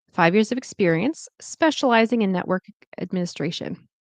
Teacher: I finished my thought. It's going down.